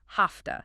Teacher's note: Because the V in have is voiced, but the T in to is voiceless, the V often becomes voiceless too, sounding like an F. So have to becomes hafta.